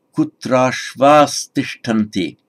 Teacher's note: visarga followed by a gentle t, and that becomes an S